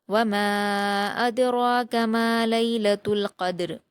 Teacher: دوسری آیت ہے وما ادراک ما لیلۃ القدر، واو پر حرکت جلد پڑھیں گے، میم پر الف مدہ ہے 2 حرکات کھینچیں گے، لیکن الف مدہ کے بعد حمزہ دوسرے کلمے میں ہے تو مد منفصل ہوگا، اس لیے اس کو ہم 4 حرکات کے برابر کھینچیں گے۔ ادراکا، اس میں حمزہ پر حرکت جلد پڑھیں گے، دال پر جزم ہے تو قلقلہ کے ساتھ حمزہ سے ملا کر پڑھیں گے۔